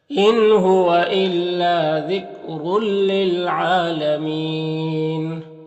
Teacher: تنوین کو لام سے ملا کر بغیر غنہ کے پڑھیں گے، اس کو ادغام تام کہتے ہیں۔